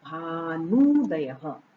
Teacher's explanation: भानु का उ और उदय का उ, ये दोनों सवर्ण साथ में आ रहे हैं, पास में आए हैं, अत्यंत समीप आए हैं, तो ये दोनों मिलकर दीर्घ हो गए। देखिए भानु का उ और उदय का उ, ये हमने भानु में से उ निकाल लिया, तो भानु का उ और उदय का उ ये दोनों अत्यंत समीप आए तो ये दीर्घ हो गए और शब्द बना भानुदयः।